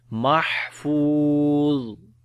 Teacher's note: On the ha we read hams quality, fa we long due to waw madda, and za we read in heavy sound and also we read soft sound as well, so we say mahfuz.